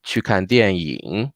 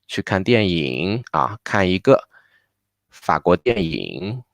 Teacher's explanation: The 电影 part, we just naturally go down and rise up again.